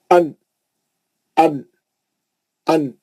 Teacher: दांतों के पीछे की जो हार्ड सख्त हिस्सा है, मसोड़े जिसको बोलते हैं, उसको लगती। लगे तो वहां लगी तो नून निकलता। मखरज है उसका, वो नून का मखरज।